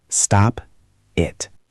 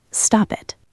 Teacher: When a word ends with a consonant sound, like T, D, S, or N, and the next word starts with a vowel sound, like A, E, I, O, or U, we do not stop. We push the consonant onto the next word.